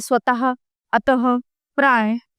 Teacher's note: संस्कृत से हिंदी में आए शब्दों में प्राय विसर्ग का प्रयोग किया जाता है। और इन्हें बोलते समय ह ध्वनि उत्पन्न होती है